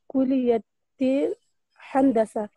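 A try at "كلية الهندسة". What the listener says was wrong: फी कुलियत लाम के ऊपर भी तशदीद है कुलियतिल हंदसा बहुत अच्छा शाबाश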